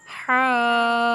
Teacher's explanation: ہا حروف مدہ ہے، الف سے پہلے زبر آ جائے، اور جیم بھی حروف مدہ ہے، واو ساکن سے پہلے والے حرف کے اوپر پیش آ جائے تو یہ بھی مدہ ہے۔ تو ہا کو تو کھینچنا ہے مد کی وجہ سے 5 سے 6 الف کے برابر، لیکن جیم کو کھینچنا ہے 1 الف کے برابر۔